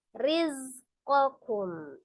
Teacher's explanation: Wa taj'aluna rizqakum ya, riz ada huruf zai. Zai itu makharijul hurufnya, ujung lidahnya di antara ujung gigi seri atas dan bawah